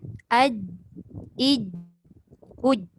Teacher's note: Macam mana yang dikatakan jahar dengan syiddah tu, dia tak keluar angin langsung. Langsung tak keluar angin. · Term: jahar dan syiddah